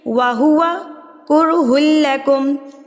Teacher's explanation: ہمارے پاس پیش ہے تو را یہاں پر پر یعنی کہ ہیوی یعنی کہ موٹا پڑھا جائے گا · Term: را ساکن موٹا